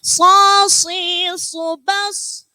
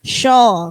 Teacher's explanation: So, nggak pakai hembusan udara dari dalam. So, hanya di bibir.